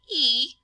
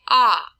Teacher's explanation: So if I say E, my jaw is going to be higher up than if I say ah, it's going to drop down